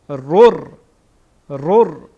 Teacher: را از حروف یرملون ادغام میکنیم، میخوانیم رر. این را با رای دیگه داخل میکنیم